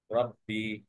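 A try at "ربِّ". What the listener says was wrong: র, আরেকটু হেভি। রব্বি।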